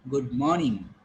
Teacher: So it should sound, it should be felt that you are calling it R by taking this vowel sound long, but you should not pronounce. So when I say morning, I say long O. And because of that, it seems that I'm calling it R, but there is no R.